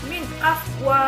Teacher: Nah, ini disebut dengan idhar halqi, yang mana dibacanya dengan cara jelas yang keluar dari tenggorokan